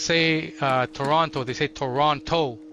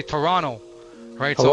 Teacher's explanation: in Toronto, the people who live here, we don't pronounce the last T. We say so instead we like to use an R.